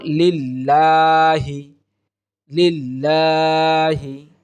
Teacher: আল্লাহ শব্দের লামটাকে পাতলা করে পড়তে হবে